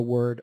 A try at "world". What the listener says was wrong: Because your tendency is not to hit that ending so hard, and then we just lose it